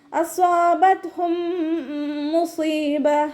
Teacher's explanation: അപ്പോൾ നാവിൻ്റെ മുഴുവൻ ഭാഗങ്ങളും മുകളിലേക്ക് ഉയർത്തിയിട്ട് വേണം നമ്മൾ തഫ്രീം ചെയ്ത് കൊടുക്കാൻ. ത സുക്കൂനാവുന്ന സമയത്ത് എയർ പാസ് ചെയ്യുന്ന സൗണ്ട് കൊടുക്കുക കേട്ടോ